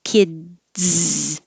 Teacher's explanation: my tongue goes up for the d to stop the air kids and then releases it so it's a very tiny stop